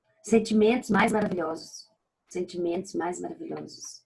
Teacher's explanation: Houve aqui uma repetição de uma consoante bilabial. Bilabial porque eu uso os dois lábios para poder formá-la.